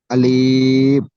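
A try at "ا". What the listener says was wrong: আলিফ টান হয়ে যাচ্ছে আমার সোনা ভাই। আলিফ একদম টান হবে না, আলিফ।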